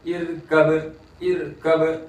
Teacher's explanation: रा बारीक, इसलिए कि रा साकिन से पहले जेर है